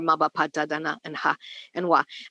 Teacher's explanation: I'm adding a schwa, but we really shouldn't. But it's easier to say those consonants that way when I'm just talking about them.